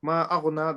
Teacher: the ghain has to be a bit more stronger and full mouth